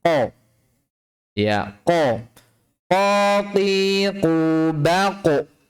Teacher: Makhraj 'qof' sama dengan ' kaf' tetapi sedikit digeser ke belakang. Di balik huruf 'kaf'.